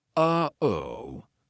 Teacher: That uh-oh is a perfect example of how to use the glottal stop. We aren't making the same mouth formation like we do for the true T, or even the held T. It's coming from our throat.